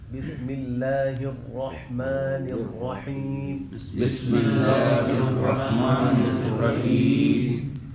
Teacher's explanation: را ہم موٹا پڑھتے ہیں اس میں ہونٹ کو گول کرنے کی ضرورت نہیں ہے، ہونٹ ویسے ہی ہمارے سیدھے رہیں گے، آواز میں را جو ہے وہ پر پڑی جائے گی.